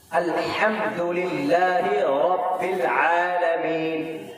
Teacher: بس الحمدللہ رب العالمین تجوید کے ساتھ الحمدللہ رب العالمین ہا کو نکالتے ہیں، ہا کا مخرج وسط حلق یعنی زبان کی بیچ کا حصہ، یہاں سے ہا ادا ہوتا ہے